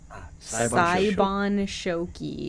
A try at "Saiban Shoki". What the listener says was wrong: Saiban Shoki. I'm sorry, I put another O in there. Saiban Shoki.